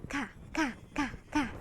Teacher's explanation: Sebutkan saja dia sedikit ada angin keluar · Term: huruf kaf